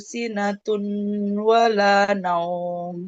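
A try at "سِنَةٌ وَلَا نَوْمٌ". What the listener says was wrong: bukan sinatun ya kalau ada tanwin bertemu Wau itu dibacanya langsung melebur ke huruf wunnya.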